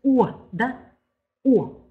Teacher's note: у него как будто бы есть призвук у